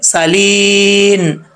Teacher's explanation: सीन में सीटी आएगी बरीक है, सालीन। यहाँ पे वक्फ करना चाहें तो नून को साकिन कर देंगे, सालीन।